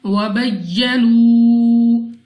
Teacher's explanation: واو مدہ، واو ساکن سے پہلے پیش، اس کو 2 سیکنڈ تک کھینچ کر پڑھنا ہے